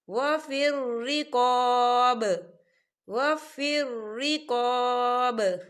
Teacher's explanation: یا دیکھیں چھوٹا سا آپ کو جیم نظر آ رہا ہے، تو یہ وقف جائز کی علامت ہے، تو یہاں پر ٹھہرنا بہتر ہے. وقف کی صورت میں با ساکن ہو جائے گا اور اس پر قلقلہ ہوگا